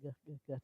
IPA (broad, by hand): g